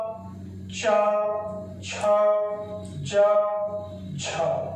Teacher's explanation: इनको बोलते समय जो वायु निकलती है वो घर्षण के साथ निकलती है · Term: स्पर्श संघर्षी